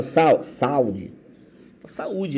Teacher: Mesmo após vogal, esse U se manteve tônico, se manteve forte. Então ele vai ter o acento para mostrar isso. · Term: hiato